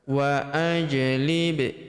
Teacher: Wa ajlib. Huruf ba berharokat sukun kita pantulkan atau kita qalqalahkan.